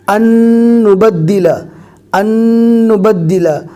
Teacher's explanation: اور جزم والی نون کی آواز نون کے ساتھ جو تشدید والی ہے اس کے ساتھ مدغم ہو جائے گی، اسی کو کہتے ہیں ادغام باگنہ، یعنی جزم والی نون کی آواز بالکل چھپ جائے گی۔